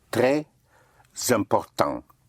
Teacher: The S at the end of a word may be pushed over to the following word if the following word starts with a vowel and it takes on the sound of a Z